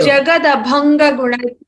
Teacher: Jagada Bhanga, the Mahaprana needs to be a little more reiterated